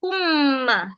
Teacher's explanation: Kita akan dengung. Dengung dia masuk pada huruf kedua terus. Sebab itulah huruf idgham syafawi huruf mim selepas dia ada sabdu.